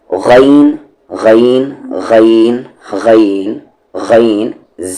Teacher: غین کا مخرج ہے اپر تھروٹ یعنی کہ اوپر والا حلق